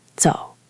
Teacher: Now compare a place with dental sounds like the surname Zi or the word zou meaning to walk or go. Tongue flat and forward.